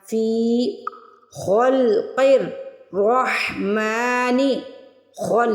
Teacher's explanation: خا اور قاف اور را کو ان تینوں کو موٹا پڑھنا ہے